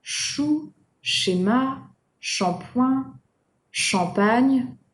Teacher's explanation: make sure not to pronounce them the English way with a T sound before it. It's not ch, like chip, right?